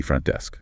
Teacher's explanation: That T in front is often a stop T.